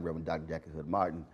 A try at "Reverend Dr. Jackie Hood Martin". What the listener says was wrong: said that way too fast. said that shit like one word. You got to break